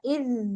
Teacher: اذ زبان کی نوک کے ساتھ ادا ہوگا